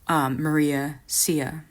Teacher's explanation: Sondheim trying to imitate a Puerto Rican English accent, where Spanish speakers would often have trouble with H's.